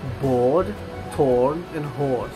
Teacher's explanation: This vowel is almost fully back and has quite strong lip rounding.